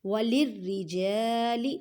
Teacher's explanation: را کو باریک پڑھیں کیونکہ را سے نیچے زیر ہے